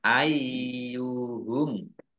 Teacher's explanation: Ayyuhum yaknya dibaca double. Ada tasdidnya. Ayyuhum. Jangan dibaca ayuhum ya, tapi ai dulu ya.